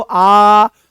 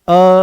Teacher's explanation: जैसे आप बोलोगे अ आप बोलो देखो पता लगेगा आपको। आ बोलो आ तो पूरा खुला। बोलोगे अ तो आधा खुलता हुआ दिखाई देगा।